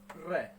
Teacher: क्योंकि इसका उच्चारण जब हम करते हैं तो हमारी जो जीभ है वो कंपन करती है, जीभ के कंपन के साथ इनका उच्चारण होता है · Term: लुंठित व्यंजन